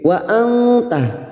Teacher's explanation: Wa anta nun sukun bertemu ta ikhfa hakiki. Kita samarkan bunyi nun sukun dan mendengung selama 3 harakat. Wa anta ala alif kecil di atas 2 harakat kita panjangkan.